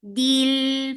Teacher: Lam will get sifa of tawassut, and tawassut is medium flow of sound.